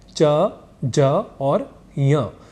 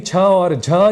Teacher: अल्पप्राण है च ज और ञ ये तीन अक्षर अल्पप्राण है और यहीं छ और झ ये दो अक्षर महाप्राण